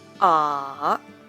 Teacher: It starts with a low pitch, falls slightly, and then rises to a higher pitch. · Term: third tone